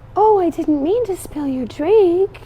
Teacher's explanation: Marilyn is still her breathy self she still has that same voice and tone when she speaks